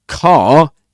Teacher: Car is pronounced with a long open back vowel, R, and no R is pronounced at the end in British English, except in, certain cases.